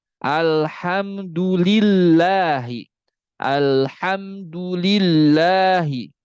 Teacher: dibaca tebal ketika dua keadaan saja yaitu sebelumnya damah sebelumnya fathah Adapun sebelumnya kasrah maka tidak dibaca tebal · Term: lam pada lafal jalala